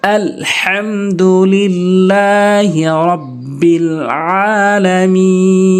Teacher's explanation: আইন খারা জবর আ খারা জবর বলেছি এক আলিফ টেনে পড়তে হবে